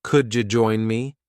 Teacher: There's an extra ja sound that connects the words.